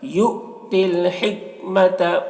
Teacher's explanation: حمزہ واو کی شکل میں ہے، حمزہ ساکنہ ہے، یہاں پر حمزہ میں جھٹکا لگے گا